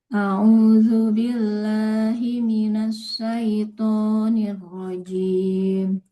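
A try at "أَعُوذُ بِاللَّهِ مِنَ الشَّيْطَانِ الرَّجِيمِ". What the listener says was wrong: Boleh diulang ibu sedikit di huruf syin ya.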